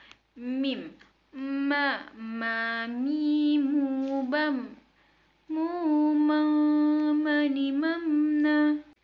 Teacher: Huruf mim dengan merapatkan kedua bibir kita